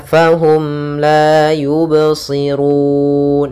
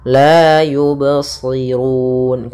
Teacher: mengalir suara bnya tidak putus dan tidak pula sakta dan tidak pula ada tambahan Hamzah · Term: Qalqalah